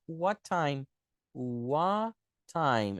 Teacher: quando a gente tem duas consoantes iguais que se encontram igual o t encontrou com o outro t a gente cancela o primeiro T